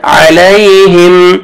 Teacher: میم ساکن کا اظہار ہے، جلدی پڑھیں گے